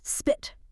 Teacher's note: It is a possive sound, meaning a small burst of air literally must escape your lips to make the sound correctly